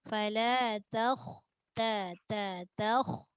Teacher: Kita nak tebalkan kha saja, ta tak jadi toh.